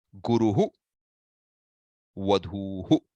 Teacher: The visarga is the ha sound basically, and the vowel which precedes determines the kind of vowel that succeeds the ha sound.